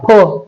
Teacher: फ ओठ बंद केलेत आणि हवा सोडली बघा फ